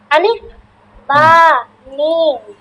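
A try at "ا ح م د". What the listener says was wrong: বা কোথায় আছে? বার নিচে নুক্তা থাকবে।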